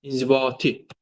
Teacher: Yəni ikinci hecəyə. İnzibati sonuncu heca, yəni dördüncü hecəyə düşür. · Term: vurğu